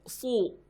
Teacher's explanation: Su beda dengan su ya. Sudur itu pakai sod, huruf sod ya, pangkal lidahnya naik